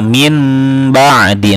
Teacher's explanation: Dibacanya suara nun sukun atau tanwinnya ditukar dengan suara mim. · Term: iqlab